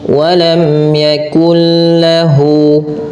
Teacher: nun mati bertemu lam suara nunnya masuk kepada huruf lam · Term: idgham bila ghunah